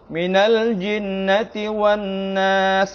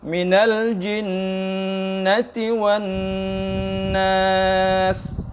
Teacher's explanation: ada dua huruf nun yang bertasydid, harus sama panjangnya atau sama gunnahnya